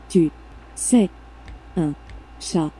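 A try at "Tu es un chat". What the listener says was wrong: S. Not se.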